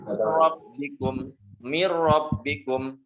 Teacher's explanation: nun sukun dileburkan. Dan tasydidnya di ra ini tidak dibaca 2 harakat, cuma 1 harakat saja. Rabbikum mir rabbikum 1 harakat dan tanpa dengung, bukan dikatakan atau dibantu 2 harakat, 1 harakat itu. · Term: idgham bi ghairi gunnah